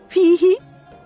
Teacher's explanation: ياء مد طبيعي مقداره حركتين في هاء معه حروف الهمس متحركه بالكسر في فيه عند الوقف